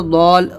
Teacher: اسی طریقے سے یہ ضاد الف لام زبر ضال، ضل نہیں بولیں گے کیونکہ الف ہے، ضال، ضا کو لام میں ملائیں گے تو ضال